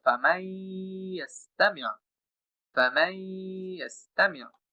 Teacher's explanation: আমি মিমের সাথে ইয়াকে যুক্ত করতেছি নুনকে ছাড়াই, এবং এখানে যে আমি কিছুটা দীর্ঘ সময় গুণনা করতেছি, এটার নাম হচ্ছে গুন্না সহ। অর্থাৎ প্রথমে আমি ইদগাম করলাম, পরে আমি গুন্না করলাম।